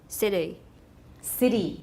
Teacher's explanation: the consonants between the vowels in words such as city, better, writer is not really a stop, but a quick tap